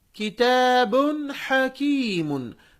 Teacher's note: با پر تنوین ہے، ہم اس کی آواز کو ظاہر کر کے پڑھ رہے ہیں